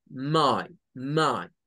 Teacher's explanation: my se compondría de esa situación de algo como una a y una I